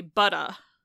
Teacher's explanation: in many British dialects, they just drop that R off entirely and replace it with a vowel. So you could say butta. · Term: non-rhotic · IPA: [bʌt.ə]